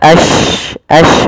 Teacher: sifat huruf yang dimana menyebarnya suara shin di dalam mulut. Intisyarus saut. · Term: tafasyi